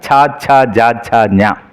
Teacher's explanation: താലുവിൽ തട്ടി ശബ്ദം പുറത്തേക്ക് വരുന്നതിനാൽ അതിനെ താലവ്യ അക്ഷരങ്ങൾ എന്നാ പറയുക